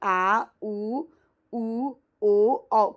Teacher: तो ये हो गया मध्य स्वर और पश्च स्वर में आप देखिए आ मतलब ये पीछे से आवाज आ रही है आ उ ओ औ कहीं भी जीभ टच आपकी नहीं हो रही है तो ये हो गया पश्च स्वर